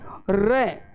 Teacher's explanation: तो साथियों जब अपने र व्यंजन का उच्चारण करते हैं तो र का उच्चारण करने पर अपने मुख में कंपन उत्पन्न होता है और उच्चारण करने पर ऐसे लगता है जैसे लुढ़कता हुआ बाहर की ओर निकल रहे हैं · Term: लुंठित